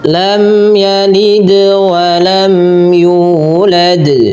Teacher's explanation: Nah, ini kesalahan yang sering terjadi dalam bacaan qalqalah, yaitu tidak memantulkan bunyi qalqalahnya. Nah, di sini dal harus dipantulkan.